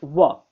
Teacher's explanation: ठीक, आप इसको व जब बोलेंगे तो दंतोष्ठ मतलब उसमें दांत और ओंठ आपके दोनों ही प्रयोग होंगे, दोनों ही छुएंगे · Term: दंत्योष्ठ